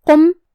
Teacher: کلمت قم یہاں حرف القاف ہے. قاف کو ہم زبان کے جڑ اور تالو کے نرم حصے سے ادا کریں گے. قاف حروف التفخیم میں سے بھی ہے تو ہمیں یہ حرف کو بھاری آواز میں پڑھنا ہے جو کہ اس پہ پیش ہے اور میم کے نیچے زیر ہے، لہذا ہم یہ دونوں حرکات کو برابر سے ادا کریں گے.